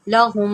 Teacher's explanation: میم مشدد ہے، یہاں پر بھی غنہ ہوگا